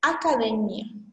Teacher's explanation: A parte forte é a parte mais forte de sua pronúncia. Só que em espanhol, sua pronúncia mais forte é o DE.